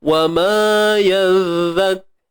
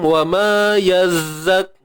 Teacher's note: Kalau huruf zal sepatutnya keluar lidah tapi lidah tak keluar, hujung lidah tak keluar. So jadilah huruf zai.